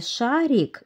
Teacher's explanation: В слове «шарик» мягкий согласный звук «р». Мягкость ему придает «и».